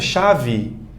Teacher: Muito comum na língua portuguesa uma palavra que termina em E ser pronunciada com I.